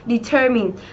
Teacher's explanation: Đây là động từ và trọng âm của chúng ta rơi âm tiết thứ hai, determine.